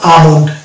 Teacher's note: এল কে আমরা বাদ দিয়ে উচ্চারণ করবো